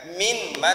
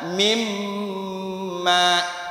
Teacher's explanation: Nun mati bertemu dengan mim, bacanya idgham bi gunnah. Jadi bacanya bukan min ma tapi mimma.